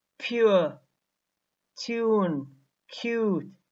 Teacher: When the glide consonant ye is produced after p, t, or k, it loses some of its voicing